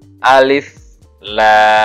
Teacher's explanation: Ya, yang ini ya, alif, la. Nah, la-nya ini 6 harokat atau 6 ketukan